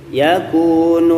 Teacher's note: Yakununna, nunnya ditahan 3 harokat, na-nya diayun saja 2 harokat.